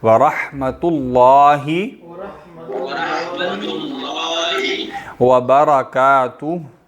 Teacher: لفظ جلالہ یعنی لفظ اللہ کو بھی موٹا پڑھتے ہیں، اس لیے اس کو موٹا پڑھا جائے گا. وَرَحْمَةُ اللَّهِ وَبَرَكَاتُهُ.